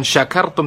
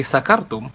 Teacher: kalau orang baca shin nggak jelas malah jadi sin. Jadi la in sakartum, bukan syakartum tapi sakartum.